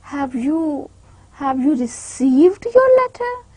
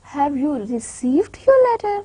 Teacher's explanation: Rather I am focusing and stressing two words over here prominently, that are received and letter. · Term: stress words